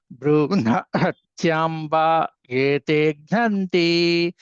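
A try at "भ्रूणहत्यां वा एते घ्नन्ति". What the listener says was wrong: ఏం లేదు సార్, చాలా తెలుగు సారు. భ్రూణ హ గట్టిగా నొక్కండి. భ్రూణ హత్యాంబా భ్రూణ హత్యాంబా ఏతే ఘ్నంతి. హత్యా దీర్ఘం చెప్పాలి. భ్రూణ హత్యాంబా భ్రూణ హత్యాంబా హత్యాంబా.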